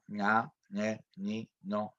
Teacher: la nasal velar que no es nane ninu sino que es una nasal que se pronuncia muy atrás